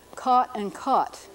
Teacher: here's two words that sound the same for many speakers not all speakers of American English